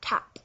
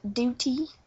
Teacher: so it's what you call a tap you tap the roof of your mouth with the T